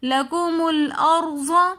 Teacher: لکم الارض میں را ساکن ہے، اس سے پہلے زبر ہے، تو اس لیے ہم ارض کے اندر را کو موٹا کر کے پڑھیں گے۔